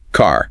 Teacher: In most American English, you really hear that R sound, especially at the end of words like car.